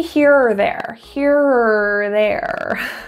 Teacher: is often pronounced as ER pronouncing just the ER sound kind of getting rid of the O altogether